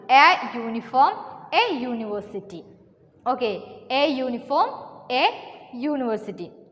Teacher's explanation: although this words beginning with the vowel u, the beginning sound is yo, which is a consonant sound, so we use a before them.